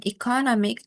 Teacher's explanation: the stress shifts from the second syllable economy to the third syllable economic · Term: stress shifting suffixes